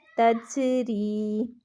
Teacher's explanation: جیم ساکن ہو تو قلقلہ ہوتا ہے، آواز پلٹ کر واپس آتی ہے۔ ری کو ہم نے لمبا کیا کیونکہ یا مدہ ہو رہا ہے